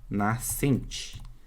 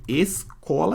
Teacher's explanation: SC juntos, mas eu não escuto aquele S.